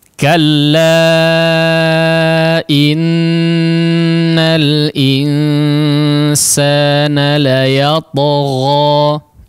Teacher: huruf nun, yaitu digunnahkan dengan gunnah yang panjang